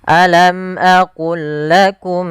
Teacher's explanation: Maka ini kita namakan, yang kami belum tuliskan di sini, ini kita namakan dengan idgham idgham mutamasilain, yaitu huruf-hurufnya sama dari makhraj dan sifatnya, yaitu cara membacanya memasukkan langsung lam yang pertama kepada lam yang kedua tanpa ditahan